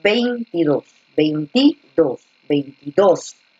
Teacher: A ver, cuando decimos 22, 22, la fuerza de voz está en la última, en la aguda.